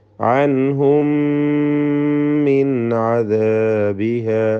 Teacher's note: അൻഹും എന്നതിലെ സാക്കിന മീമിന് ശേഷമുള്ള മീമിൽ പൂർണ്ണമായും ലയിപ്പിച്ച് മണിക്കണം. ഇദ്ഗാം ഷഫവി എന്ന് പേര് നൽകാം.